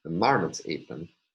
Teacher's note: the high star tone will attach to the primary stress on the first syllable, the primary phrasal stress on the first syllable of marmots. · the mid tone to the first syllable and the low tone to the last syllable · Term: declarative tune